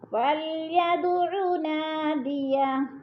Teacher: فلید کی دال پہ قلقلہ ہے، ہلا کر پڑھیں گے